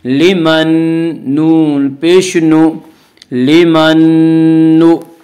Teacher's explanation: نون ساکن کو نون سے ملا کر غنہ کے ساتھ پڑھیں گے اور اسے ادغام مع الغنہ ادغام ناقص کہتے ہیں۔ لمن نون